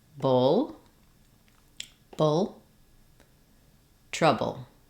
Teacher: stays down the front of the tongue tongue lifts and then I'm going to really reduce and shorten the vowel so I go from saying Bull with a clear full vowel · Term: syllabic l